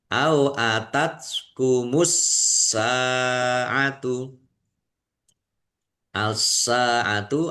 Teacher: Sin fathah alif mad thobi'i panjang dua harakat